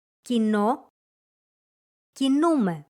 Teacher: their stress moves to the last syllable in the active voice and the second to last in the passive voice